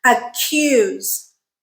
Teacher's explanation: the stressed syllable starts with the C Sound and therefore we aspirated